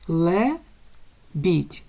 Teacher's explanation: схема нам підходить до цього слова далі лебідь лебідь 2 склади Лебідь наголошений перший склад